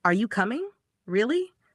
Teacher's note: Rising intonation. This happens when the voice goes up at the end.